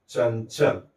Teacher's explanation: अर्थात हमें इस अनुस्वार का उच्चारण ञ की तरह करना है।